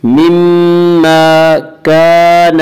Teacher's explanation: الف مدہ کو ایک الف کے برابر کھینچ کر پڑھیں گے